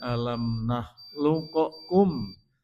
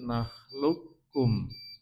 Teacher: Jadi qalqalanya hilang tidak alam nahluqokkum tapi nakhlukkum. Karena diidgamkan sehingga sifat qalqalahnya hilang. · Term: idgham mutaqoribain